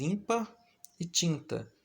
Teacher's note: o fonema vogal nasal IN, representado pelos dígrafos IM e IN, aparece nas palavras ímpar e tinta